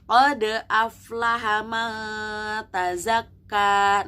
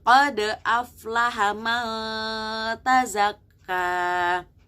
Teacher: ada nun sukun bertemu dengan ta, hukumnya adalah ikhfa. Jadi kalian bacanya harus agak disamar-samarkan